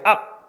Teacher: 앞 피읍이지만 비읍으로 소리가 난다고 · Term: 음절의 끝소리 규칙